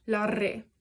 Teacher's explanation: what's written as a double R in Basque. So that would be like kind of a rolled R.